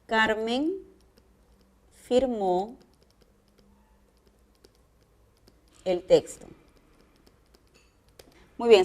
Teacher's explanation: si a mí me preguntan qué tipo de tono presente esta oración yo voy a contestar es descendente